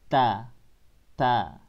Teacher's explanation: ujung lidahnya ada di gigi atas bagian dalam